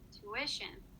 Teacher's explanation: You put the stress on the I in tuition because it comes right before the TION or sh sound.